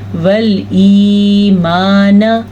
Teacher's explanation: इस या की वजह से अलिफ को खींच के पढ़ेंगे। अगर कोई पढ़ेगा वल ईमान तो उसने या मद्दा तो अदा ही नहीं की, यानी या को वो स्किप कर गए।